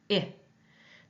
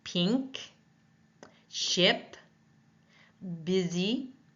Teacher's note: the tongue is high in front and the mouth is laxed